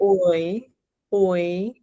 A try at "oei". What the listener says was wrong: Not oi. Ooh. It's still the ooh start, right? Because oi is the first one. That's the OOI. Oi. Ooh. Oei. Oei.